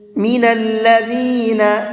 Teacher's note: ذال کو نرمی کے ساتھ میں پڑھیں گے اور نون کو تھوڑا سا کھینچ کر کے پڑھیں گے